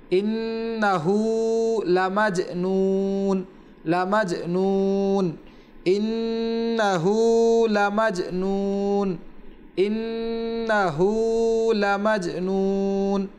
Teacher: ইন্নাহু নুনের উপরে তাসদিদ রয়েছে, সেখানে একালিফ পরিমাণ গুণনা করতে হবে, এবং ইন্নাহুর পরে যে হা রয়েছে সেখানে একালিফ টান হবে।